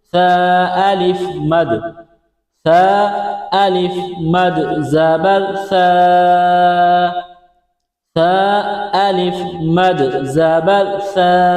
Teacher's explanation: سا کو نرم پڑھیں گے۔ زبان کا سرہ تھوڑا سا باہر نکالیں گے سا کو پڑھتے وقت۔ سا کے اوپر زبر ہے، اس کے بعد الف ہے، الف کے اوپر مد ہے، یہ لمبا مد ہے، 4 الف کے برابر اس کو کھینچ کر پڑھیں گے اس طرح۔